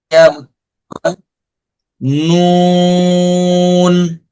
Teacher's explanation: জিহ্বার আগা তার বরাবর উপরে তালুর সঙ্গে লাগাই